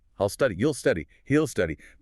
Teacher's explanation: The will just melts right into the word before it.